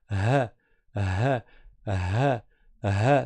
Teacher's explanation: ça sort de la gorge du fond de la gorge. Le point de sortie du ha est tout proche du point de sortie du e.